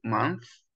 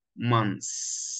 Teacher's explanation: يبقى في المفرد بنطلع لساننا في الث ساوند وفي الجامع ما بنطلعش لساننا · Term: th sound